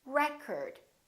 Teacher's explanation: The first syllable is stressed.